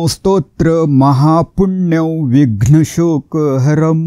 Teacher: विघ्नवर किंचित आघात घ्यायचा आहे